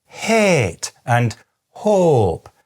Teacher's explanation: in many dialects there, people still say het and hope. Those are still monophthongs.